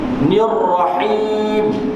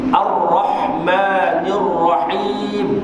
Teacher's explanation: Sebutan dia ha. Nir-rahim agak berat sedikit daripada sebutan huruf ha simpul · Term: huruf ha pedas